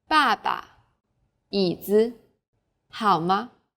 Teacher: Besides the 4 stressed tones, there's a neutral tone. This is very light, weak, and short. Pay attention to the second syllables of the next examples.